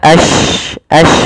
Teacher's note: menyebarnya suara shin di dalam mulut. Intisyarus saut.